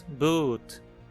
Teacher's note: No inglês, por exemplo, o som do U longo, como na palavra boot, é mais anterior que um U propriamente dito. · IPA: [bu̘t]